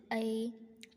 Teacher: ऐ म्हणताना कंठा आणि तालु या दोन्हीतून उच्चार उत्पन्न होते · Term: कंठ तालु